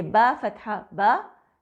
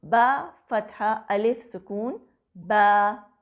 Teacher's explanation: हरफे मद की आवाज आम हरकत से दुगनी लंबाई रखती है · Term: अलिफ मद